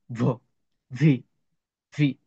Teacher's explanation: এমনি তো ভ, আর এখানে হবে ভ। একটু দুইটা টুট একসাথে করবেন, একটা ঝিন শব্দ হবে